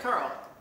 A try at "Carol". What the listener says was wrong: No, two syllables. Carol. Carol.